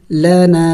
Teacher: دیکھیں الف مد بھی ہے اور چھوٹا مد بھی ہے تو اس کو تھوڑا سا اور زیادہ لمبا کریں گے